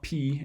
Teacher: One sort of the more salient difference for M from P is that with an M, you actually have air flowing out through your nose at the same time as you're making it as well. So P, air is just going to come through your mouth and kind of get stopped up behind your lips for a brief while